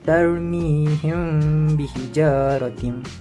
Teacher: Cara bacaan adalah menyembunyikan bunyi mim serta dengung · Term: ikhfa syafawi